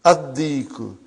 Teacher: You did not pronounce lam because it is sun letter.